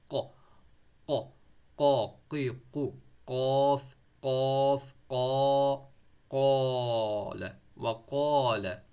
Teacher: پر، وہ وہاں والی جگہ پر آپ نے دیکھنا ہے کہ زبان کی جو جڑ ہے وہ اوپر والے اس کے ساتھ گوشت کے ساتھ جو ہے وہ چپک جائے گی قاف کو پڑھتے ہوئے